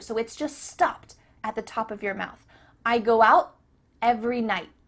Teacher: your tongue is at the top of your mouth. You're about to make the T sound, but no air goes through. So it's just stopped at the top of your mouth. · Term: cut off the T